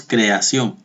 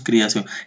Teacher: Pronunciamos la E como si fuera I. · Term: sinéresis